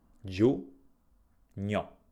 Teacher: La prima sillaba si pronuncia giù, non pronunciamo la I.